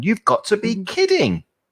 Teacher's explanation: And remember that up and down intonation. The more surprised you are, the more it will go up and down.